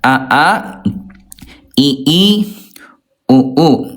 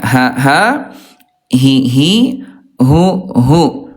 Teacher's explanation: huruf hamzah dia jahar tidak ada udara. Sementara ayah bunda kalau huruf ha dia alhams ayah bunda keluar udara ya